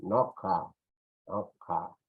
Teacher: En Cusco, un poquito que desaparece la ñ, dicen noja, noja, pero la ja está ahí